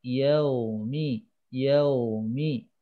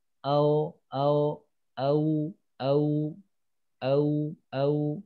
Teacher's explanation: ketika ada ww sukun sebelumnya fathah itu Sebagian ada yang EE keluarnya itu bukan u tetapi O